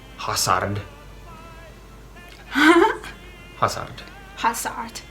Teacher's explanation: So we don't have that Z sound at all. So it's usually pronounced as either S or like TS, like TS sound.